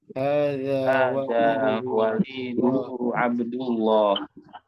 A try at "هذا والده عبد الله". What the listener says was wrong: Ya, kita ulang lagi, diperhatikan wawunya dipanjangkan. Hadza waliduhu Abdullah.